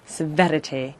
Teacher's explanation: he's gone from very posh and heightened rp to this trilled r